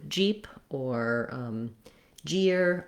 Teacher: So this is just like in the word Jeep or jeer with a bright E sound and a pushed out j sound